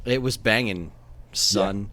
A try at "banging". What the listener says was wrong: Man, see, the problem is that you're pronouncing the G, and you have to drop that part of it.